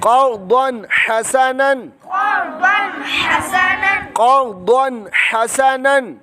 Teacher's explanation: دو زبر کی تنوین کے بعد حروف حلقی میں سے حا آنے کی وجہ سے اظہار بغیر گننے کے